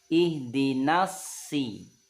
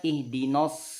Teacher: ketika fathah setelahnya masuk ke tasdid huruf shad di sini, maka bunyi A jangan terpengaruh ke bunyi O.